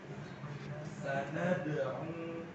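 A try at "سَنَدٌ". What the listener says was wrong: Punya hati-hati, nih, hidung. Sanad'un. Jangan masuk hidung.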